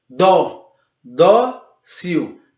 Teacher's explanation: A palavra dócil também é acentuada, termina em L, ele termina em L e a sua sílaba tônica é a penúltima